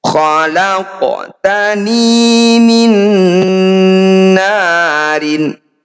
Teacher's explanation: Nun sukun bertemu nun, disebut bacaan idgham bi gunnah. Bunyi nun yang pertama masukkan pada nun kedua, kemudian dengungkan dua harokat. · Cara bacanya bunyi qaf harus kita pantulkan. Pantulannya jangan berlebihan, sesuai namanya. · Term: qalqalah sugro